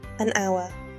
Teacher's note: hour starts with H, but the H is silent. It sounds like ow, a vowel sound.